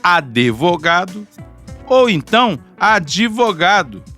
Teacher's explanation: vai por uma vogal após o d e dividir a sílaba em duas